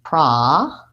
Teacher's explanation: Javier would like to know about the word process as a noun and as a verb. And this is a word in American English that for the letter O, we say an ah sound. So I actually say process, first syllable stress.